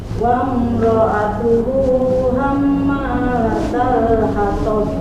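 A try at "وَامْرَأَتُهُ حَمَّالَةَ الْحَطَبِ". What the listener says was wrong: Ya, punten sedikit mimnya kurang dengung. Hamma wa imra'atuhu hammalatal hatab.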